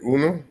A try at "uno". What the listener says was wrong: Uno, yes. Like in Spanish, uno.